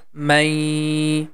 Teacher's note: Or we can say the man sound is going to merge with letter ya. This noon becomes nasal sound, and together we are going to pronounce mai. And also we have to make the nasal sound for two count.